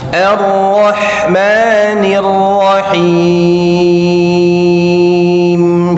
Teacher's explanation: Jadi hati-hati kata Arrahman dan arrahim huruf ha tipis lalu Ma dua harakat jangan arrahmani arrahmanirrahim arah Rahma ha tipis